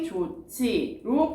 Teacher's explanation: 히읗과 지읒이 만나서 치읒으로 줄어들었기 때문에 좋지로 발음이 됩니다. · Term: 거센소리